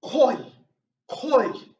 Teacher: the fourth tone is just like in Chinese and it's a sharp falling tone